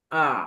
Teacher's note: ব্রিটিশরা এটাকে আ উচ্চারণ করে, রটা বাদ দিয়ে